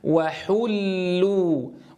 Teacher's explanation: الواو لا بد أن نضم الشفتين ابتداء حتى نحقق مخرجها، ثم نفتح الفم لتحقيق فتحتها، ثم الواو نضم الشفتين عندها وحو. طيب الآن اللام مشددة مضمومة، مشددة، الحرف الأول ساكن والثاني مضموم، ثم نستمر بالضم عند الواو.